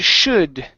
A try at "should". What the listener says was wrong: here you're pronouncing the O